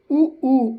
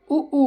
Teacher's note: ओष्ठ, ओष्ठ का मतलब होता है ओठ, ऊ ऊ। अपने होठों को ध्यान दें, होठों पे ध्यान दो, ऊ ऊ देखो गोल हो रहे होंगे, ठीक है।